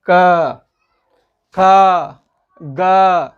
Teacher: जीवा का जो मूल स्थल है अर्थात जो कंठ है, इन कंठ से इन वर्णों का उच्चारण हो रहा है · ठीक है, आको विसर्जनीयानां कंठ, ये सूत्र हो जाएगा। इन वर्णों का उच्चारण स्थान कंठ हो जाएगा